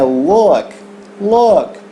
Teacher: não é um A e não é um U, é um meio termo, né? Então, é look, look, that looks so beautiful.